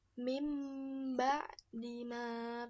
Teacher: Nah, di sini ada nun sukun bertemu dengan ba. Dia huruf nun sukun atau tanwin dirubah menjadi suara mim